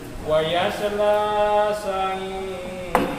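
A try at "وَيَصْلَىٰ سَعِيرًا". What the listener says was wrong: Ya, jangan terlalu panjang, naik aja. Wa yasla sa'ira. Stabilnya jangan terlalu panjang. Matnya ya, hanya naik aja. Wa yasla sa'ira.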